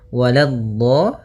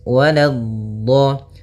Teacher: Hati-hati di sini. Waladdo, la-nya jangan sampai tebal, jangan waladdo, tapi la-nya tipis. Waladdo.